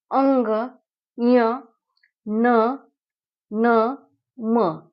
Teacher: त्यानंतर अनुनासिक व्यंजने. अनुनासिक व्यंजने म्हणजे काय? नाकातून येणारा ध्वनी.